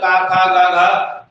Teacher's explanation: और का वर्ग में कहीं नहीं जीभ गलेगी, सीधे बोले का खा गा घा, बोल रहे कि नहीं बोल रहे, का खा गा घा, जीभ कहीं टच नहीं कर रही है, सीधे जो उच्चारण है वो हमारा कहां से निकल रहा है, गले से निकल रहा है। इन्हें कंठ वर्ण बोलते हैं।